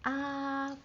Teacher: very high and flat. It doesn't drop. · It doesn't drop. So ah, your highest speaking voice, highest speaking pitch. Ah, that is your first tone.